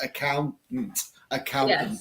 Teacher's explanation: without, even though it is spelt with a T, T-A-N-T, I don't really pronounce the penultimate T.